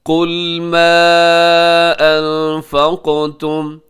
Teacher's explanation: قل میں قاف موٹا رکھیے گا